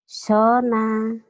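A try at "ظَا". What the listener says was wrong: Bukan sona ya, ini zo, Z-H-O. Nih, tulisannya gini ya, Z nih. Ingat-ingat ya, Z. Zo, tapi ada O-nya, zona. Kan ada zona aman, zo. Zo-nya tapi mulutnya jangan dimonyongin. Zona.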